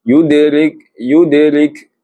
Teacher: Huruf dal sukun. Dal sukun di pertengahan ayat ataupun pertengahan kalimah. Jadi qalqalah sughra lantunan yang ringan